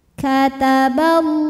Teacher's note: Lam pada lafaz Allah atau lam jalalah dibunyikan secara tafkhim sebab huruf sebelumnya berbaris fathah, maka dibacanya tebal.